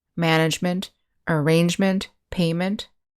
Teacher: we have the ending ment pronounced mint